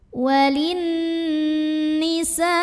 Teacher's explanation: Sebab ada nun yang bertasydid. Cara bacanya didengungkan. Jadi bunyi N-nya tahan sampai ada getaran halus ke hidung kurang lebih 2 harokat. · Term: nun musyaddadah